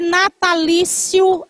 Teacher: E termina com ditongo. Duas vogais na mesma sílaba, que é o I e o O.